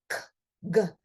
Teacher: K and G, they're produced in the same place. They're a velar sound produced in the throat area.